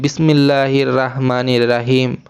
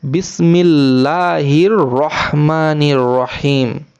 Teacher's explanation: এই হাটা একটু গলা চাপতে হবে, মানে খুব বেশি চাপতে হবে না, হালকা একটু চাপতে হবে